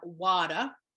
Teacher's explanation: the t in the water is softened to a d and the r is actually changed to what we would call a schwa if you were using ipa or the uh sound as in